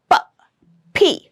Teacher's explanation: It is produced in this area. So I'm using both my lips to produce this sound